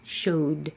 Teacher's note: All vowels are voiced, so it's duh.